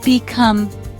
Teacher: Become. 2 syllables. Second syllable is stressed.